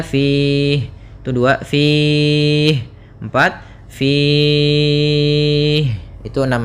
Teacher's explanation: Mad arid disukun itu panjangnya boleh 2 harokat, boleh 4 harokat, dan boleh pula 6 harokat.